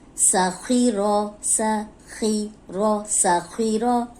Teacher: خو موٹا ہے، زیر کے ساتھ بھی موٹا ہی ہوگا، لیکن یہ زیر کے ساتھ اتنے موٹے نہیں ہوتے جتنے زبر کے ساتھ موٹے ہوتے ہیں